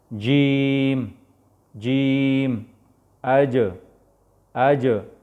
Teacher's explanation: د ژبې برنۍ حصه کله چې بره تالو سره ولګي د دې نه جیم ادا کېږي